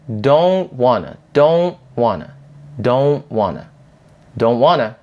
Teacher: a stop t which is a t at the end of the word where we don't release it usually